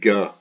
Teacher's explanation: it's always hard that gut sound it's never a soft G as in gem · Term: hard G